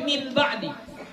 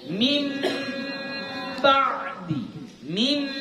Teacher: Nun Sakinah atau tanwin itu ditukar menjadi huruf mim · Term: gunah